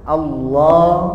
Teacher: tapi Allah setengah-setengah aja. Setengah O setengah A. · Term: lam jalalah